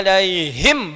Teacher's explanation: Begitu menyebutkan alaihim, nafas keluar banyak ya.